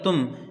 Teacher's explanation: میم کو ظاہر کر کے بغیر غنہ کے جلدی پڑھا جائے گا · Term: اظہار شفوی